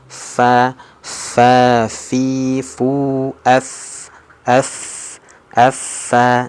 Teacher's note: Coba telapak tangan kita letakkan saja di depan mulut. Nah, ketika mengucapkan huruf fa ini terasa nih percikan nafasnya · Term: sifat hams